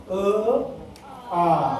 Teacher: सजातीय म्हणजे एकाच ठिकाणी 2 आवाज निघतात. म्हणजे पहिला अ चा आवाज आमच्या कंठातून निघतो ना, तर आ चा पण आवाज तिथूनच निघतो. अ आ. इथं बोट ठेवल्यावर कळतो, तिथनंच आवाज येतो.